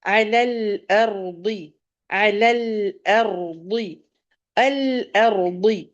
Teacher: یہاں پہ الارض کا را آپ نے نوٹ کیا ہوگا موٹا ہے، تو اس کو موٹا ہی پڑھیں گے. مفخم اس کو کہیں گے.